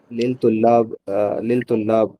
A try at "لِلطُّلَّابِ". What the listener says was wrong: للطلابی. طا جو ہے حروف شمسی میں سے ہے تو ملا کے پڑھنا ہے. للطلابی نہیں پڑھیں گے, لل نہیں پڑھیں گے, للطلابی ملا کے.